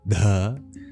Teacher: That h in front of the d is no silent h. It's a breathy d.